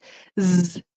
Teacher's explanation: Z, there's vibration in your throat. So it's kind of the same, but it's one's voiced, one's not.